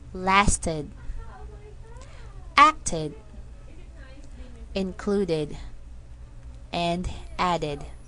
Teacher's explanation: the ed ending will sound like id, which is a combination of a short I sound and a D sound. This happens whenever we need to add a syllable to a word when the ed ending is added.